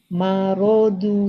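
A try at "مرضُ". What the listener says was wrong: Nah, tinggal ro-nya nanti ro tebal ya. Ro. Itu yang bedanya ya. Marodu.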